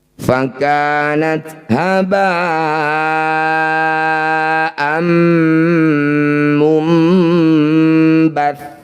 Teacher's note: Bunyi fathah tanwinnya langsung masukkan pada mim, dengungkan 2 harokat. Jadi langsung rapat bibir kita, ditahan 2 ketukan. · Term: idgham bi gunnah